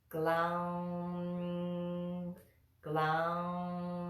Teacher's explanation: we float the tongue to the roof of the mouth for that mmm sound at the end